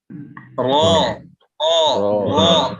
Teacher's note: നാവിന്റെ തലയുടെ മുതു മേലെ മുമ്പലിന്റെ ഊൻ